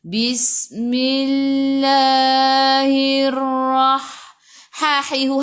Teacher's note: Alif lam syamsiyah, lam tak ada sukun selepasnya ada sabdu, terus tekan ke dalam ra, kena ada getaran pada ra, takrir sifatnya.